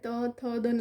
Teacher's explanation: જીવ અને દાંતને બંનેને તો એ કેવું છે પ્રકાર દંત્ય છે દાંતને સ્પર્શે એટલે દંત્ય પ્રકાર છે · આ બધા વર્ણ સ્પર્શે છે, જીભ અને દાંતને બંનેને.